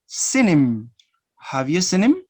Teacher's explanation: you're going to link the sound n with the sound I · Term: linking